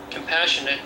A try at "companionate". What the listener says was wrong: that's companionate, not compassion. Companionate.